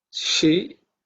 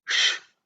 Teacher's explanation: this she is palatal. Sha is cerebral.